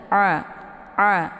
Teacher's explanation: A ini letak makharijul hurufnya di tenggorokan bagian tengah.